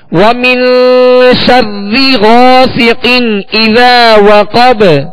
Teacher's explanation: الف سے پہلے زبر ہے اور الف مدہ ہوگا اور 1 الف یعنی 2 حرکت کی مقدار اسے کھینچ کر پڑھیں گے. غاسی غائن کو پر پڑھیں گے، موٹا پڑھیں گے، حروف مستعلیہ میں سے ہے · سین کو سختی کے ساتھ سیٹی کی آواز میں پڑھیں گے، قاف کو پر پڑھیں گے حروف مستعلیہ میں سے. اسی طرح اذا وقب قاف کو پر پڑھیں گے اور با پر ہم قلقلہ کریں گے اس لیے کہ وقت کی صورت میں اسے ہم نے ساکن کیا ہے.